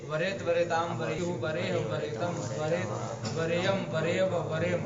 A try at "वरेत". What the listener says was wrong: हाँ वहाँ तब पूरा बोलिए, तम के बाद हलंत नहीं करना है ना, तम के बाद तब पूरा बोलना है, नहीं तो दोनों एक ही जैसा हो जाता।